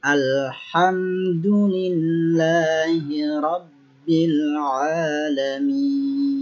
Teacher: mim mati, sama halnya dengan lam, tidak boleh dipantulkan seperti qalqalah.